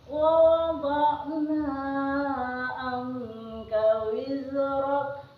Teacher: Di sini terdapat satu hukum bacaan tajwid, yaitu nun mati bertemu qaf. Hukum bacaan ikhfa hakiki. Cara membaca membentuk huruf qaf.